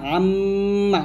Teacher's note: মিমটা দুটি মিলাইয়া আম্মা গুণনা করবেন আর নুনটা জিহ্বাটা উপরে তালুর সঙ্গে লাগিয়ে গুণনা করবেন আন্না এরকম।